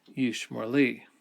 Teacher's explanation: It still has the O sound, but it's a short vowel rather than the long vowel. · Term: vowel reduction